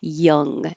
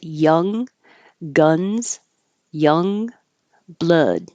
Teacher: And the tongue goes up in the back for the ending, just like in the words lung, rung, sung.